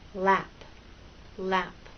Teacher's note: it again the position of your tongue is a little different the tip of your tongue for L and lap touches that bump and the sides are down